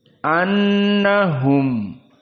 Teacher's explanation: telah kita bahas kemarin makhrajnya dari khaysum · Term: idgham mimi